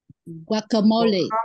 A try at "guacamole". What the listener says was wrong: Đúng rồi,